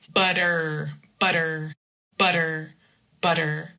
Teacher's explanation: You touch with the flap and then you leave your tongue in the middle of the mouth